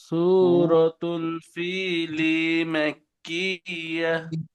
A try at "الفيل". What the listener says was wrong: ফিলি, লিতে টান হবে না, ফিতে টান হবে, ফিলি।